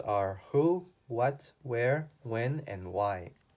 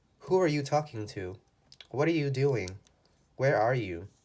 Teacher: These questions where we're asking who, what, where, when, or why, our voice goes down. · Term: intonation goes down